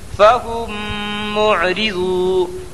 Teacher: را کے نیچے زیر کی حرکت ہے اس لیے را باریک ہوگی · واو ساکن سے پہلے غاد کے اوپر پیش کی حرکت ہے اس لیے واو مدہ ہوگا واو مدہ کو 1 الف کے برابر کھینچ کر پڑھیں